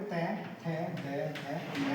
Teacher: आपको जीभ जो है वो दंत को स्पर्श करती है